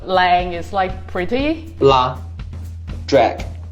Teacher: They both have a clear L sound, and it's restricted to the beginning of syllables.